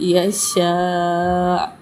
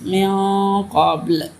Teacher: حمزہ کے اوپر پیش تھی، وقف کی حالت میں حمزہ ساکن ہو گیا، اور یہاں تو جو ہے یہ وقف مطلق کی علامت ہے، یہاں ٹھہرنا بہتر ہے۔